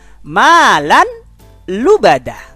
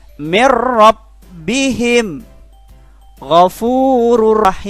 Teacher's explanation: cara membacanya bunyi nonnya dimasukkan pada huruf idghamnya, tetapi dibacanya tidak disertai dengungan. Artinya langsung, maka membacanya bukan alam atau malal, tidak ditahan, tapi langsung dimasukkan. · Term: idgham bila gunnah